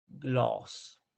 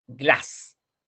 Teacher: Pero cuando tenemos 2 consonantes, la A es corta y ya es más abierta.